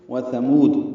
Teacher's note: واو ہونٹ کی نا تمام گلائی سے ادا کریں گے